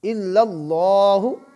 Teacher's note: یہاں لفظ اللہ کا لام پر ہوگا کیونکہ اللہ کے لام سے پہلے زبر ہے